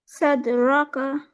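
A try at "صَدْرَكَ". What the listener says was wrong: دوبارہ پڑھیے. ہاں صاد سے. صدرک یا صدرک یا صدرک جو بھی پڑھیے، لیکن صاد سے، ٹھیک ہے. صدرک یا صدرک.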